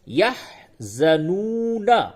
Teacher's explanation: یہ واو مدہ ہے، واو ساکن سے قبل پیش ہے، یہ واو مدہ ہے، اس کو تھوڑا کھینچیں گے اور نون کے اوپر یہاں پہ جب اس آیت پہ وقف کریں گے تو نون کو ساکن بولیں گے تو پھر ہوگا یحزنون، ولا هم يحزنون، ولا خوف عليهم ولا هم يحزنون.